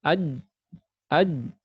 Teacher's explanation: Makhrajnya huruf jim tertutup rapat. Ya, aj. Ya, makanya semua makhraj yang tertutup rapat itu pasti dikolkolahkan, pasti itu.